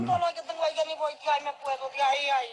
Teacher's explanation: la vocalización de las líquidas en la República Dominicana